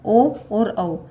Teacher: ओ और औ, इन दोनों का उच्चारण स्थान क्या है? कंठ ओष्ठ।